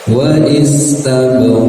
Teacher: Wa istabra qaf kita matikan ya, atau mati alif istilahnya, maka harus dipantulkan karena qaf ini bagian dari huruf qalqalah yang memiliki sifat tebal, maka pantulannya pun harus terdengar tebal ya, jangan menjadi tipis